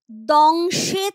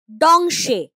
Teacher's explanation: এই যে দন্ত ধ্বনি দ এটাই দেখো উচ্চারণে হয়ে গেছে মূর্ধন্য ধ্বনি ড